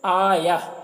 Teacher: مد منفصل کو 3-4 الف کے برابر کھینچ کر پڑھتے ہیں